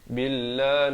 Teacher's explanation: Billah lafz jalalah dibaca nipis dua harakat